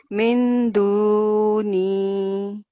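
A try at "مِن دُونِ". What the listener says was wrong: Now, what the mistake here is that we're not going to do a full noon sound. We have to hide the noon sakin sound. So this rule is called ikhfa rule.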